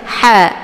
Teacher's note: ha-nya yaitu berada di posisi tenggorokan bagian tengah sejajar dengan huruf ain, ya, ha. Jadi ada suara yang mengalir, yaitu berdesis angin, ha, ya, atau biasa disebut dengan hamas, ya.